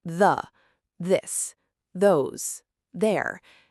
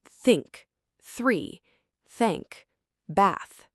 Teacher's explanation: So for both of them, your tongue goes between your teeth, right between your top and bottom teeth, just a little bit. But for the voiced TH, you turn your voice on. You feel a vibration here, the. And for the voiceless TH, you turn your voice off. It's just air, like a soft wind. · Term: TH sound